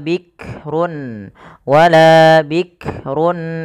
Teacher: jangan sampai memantulkan huruf Kaf karena Kaf tidak punya sifat qqalah